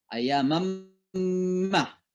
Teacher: Jadi dimasukkan suara nun itu ke mim. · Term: Idgham bigunnah